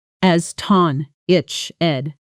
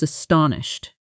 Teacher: The stress falls hard on the second syllable.